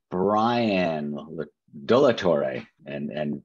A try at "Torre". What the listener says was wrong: That's close enough. That's good. I think you're supposed to roll the R's, but I'll let that slide.